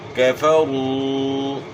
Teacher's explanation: یہاں را کے اوپر پیش ہے را کو موٹا پڑھنا ہے اور و ساکن سے پہلے پیش ہے تو و مدہ ہے · و ساکن سے پہلے پیش ہے تو و مدہ ہے ایک الف ایک الف کی مقدار کے برابر مد ہوگا